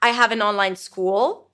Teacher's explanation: I went up, but it was not the end of the sentence.